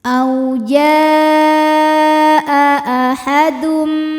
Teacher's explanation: Mad tabi'inya alif didahului fathah, hamzahnya a pada kata jaa, maka huruf jim kita panjangkan, boleh 4 boleh 5 harokat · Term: mad wajib muttasil